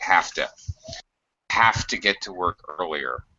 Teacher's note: just say have to again it's very much reduced and uh the v sound actually becomes an f sound it sounds like have to have to get to work earlier